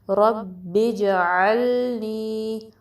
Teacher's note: عین درمیانے حلقے سے زیادہ ہوتا ہے، ٹھیک ہے، اس کو حمزہ جیسا نہیں پڑھنا۔ لام ساکن کو پھر ہلانا نہیں ہے، اس پہ کلکلا نہیں کرنا، ٹھیک ہے۔